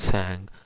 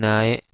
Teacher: it is an alveolar closure because the position of na is alveolar ridge